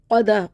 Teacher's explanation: قاف کو خوب موٹا پڑھنا ہے